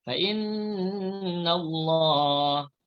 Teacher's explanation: nun yang bersabdu namanya wajibal gunnah. Dibaca dengan dengung dua harakat.